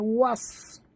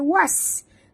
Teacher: Okey, huruf sad tebal. Was. Ya, jangan baca was. Kalau baca was jadi sin.